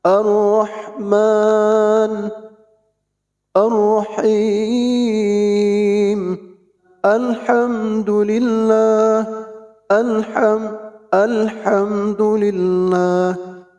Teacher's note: Sahabat bisa rasakan juga ha ini ada di tengah tenggorokan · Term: ha kecil